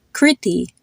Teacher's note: Now there's a common type of name that you'll see where it has two I's in it. The first I is a short I and the second I is a long I.